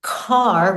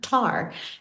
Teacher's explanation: car where the tongue comes to the back, we'll bring the tongue to the front.